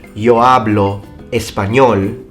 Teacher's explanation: hablar with the H that is not pronounced in Spanish